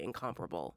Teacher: In incomparable, it's on the second syllable. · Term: accent